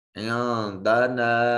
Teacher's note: نون ساکن کے بعد دال ہے جو حرف اخفا ہے، نون کو اپنے مخرج میں چھپا کر ادا کریں گے